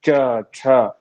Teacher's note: च छ स्पर्श कर रहा है तालू में